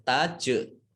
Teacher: jim sukun, ini bacaan kolkolah atau memantul